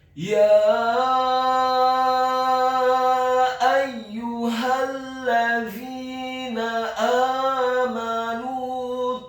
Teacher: Huruf mim-nya dibaca fathah 1 harokat. Dan huruf nun-nya dibaca tipis, dhammah 2 harokat karena setelahnya ada huruf waw sukun